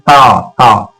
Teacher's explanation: जुबान सीधे सीधे दांत से टकरा रही है, हवा का प्रेशर हमारे दांत पर बनता है और इन्हें हम बोलते हैं दंत, दंत कर दिया, दंत।